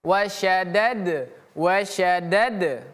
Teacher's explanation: Huruf dal juga memiliki sifat qalqalah yang artinya memantul.